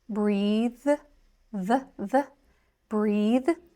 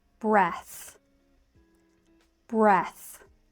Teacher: For the verb, it's voiced, breathe, the, breathe. And for the noun, it's unvoiced, breath, breath.